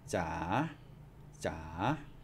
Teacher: it's not ha ja, it's ja, ja, a rising tone.